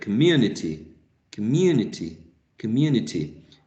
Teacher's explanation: so the schwa is present in this first syllable